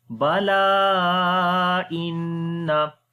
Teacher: after the alif madda, the hamza is coming in the beginning of the next word. So this is madde munfasil, we long here 3 to 4 seconds. So we say bala inna.